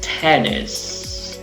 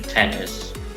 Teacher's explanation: La primera sílaba está acentuada y la segunda no, pero ojo, tiene una I corta.